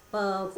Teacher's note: एक होता है ओष्ठ, जिसमें दोनों ओंठ जुड़ जाते हैं।